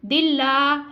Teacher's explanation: अल्लाह के लाम से पहले हर के नीचे ज़ेर है इसलिए हम इसको बारीक अदा कर रहे हैं और लाम को बारीक खींच के अदा कर रहे हैं